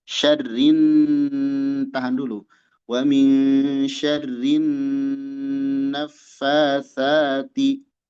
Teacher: Syarrin ditahan karena nun bertasydid. · Nah, di sini fin nunil musyaddadah gunna. Pada nun yang bertasydid terdapat gunnah